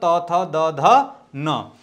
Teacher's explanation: जो त वर्ग के वर्ण है त वर्ग का उच्चारण स्थान दंत होता है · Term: दंत्य